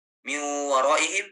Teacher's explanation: Atau pada saat idgham guna miu waraihim, miu itu masih ada sifat nunnya ketika mengucapkan huruf waw, tidak miu tapi ada masuk ke hidung.